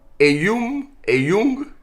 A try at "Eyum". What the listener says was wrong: Avec un M à la fin.